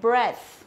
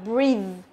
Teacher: danh từ là âm e và động từ thì sẽ là âm y dài